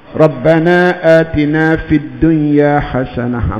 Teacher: Bila baca dunya, bermakna kita sudah idghamkan, memasukkan bunyi nun ke dalam ya. Walhal hukumnya izhar mutlak.